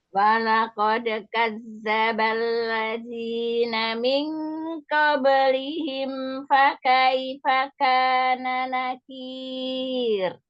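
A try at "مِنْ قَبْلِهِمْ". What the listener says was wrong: nun sukun ketemu qafnya, tebalkan lagi Eyang. Angkat pangkal lidahnya.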